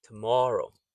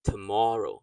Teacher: the first O is unstressed, so it's schwa O